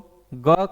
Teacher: ग का जो उच्चारण होता है वह किससे होता है दोस्तों कंठ से होता है